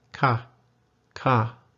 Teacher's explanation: comes from a part of the country where they don't do the falling tone very pronounced, especially on the word ka